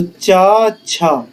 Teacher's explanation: चा वर्ग के वर्ण हैं तालव्य से